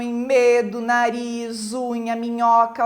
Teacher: e e é que você percebe então que o som realmente ao produzir esse som tem tanto que sai pela boca mais um tanto você acaba expelindo esse ar pelo nariz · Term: consoantes nasais